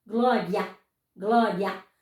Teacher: o A é sempre uma vogal. E o I é a semivogal.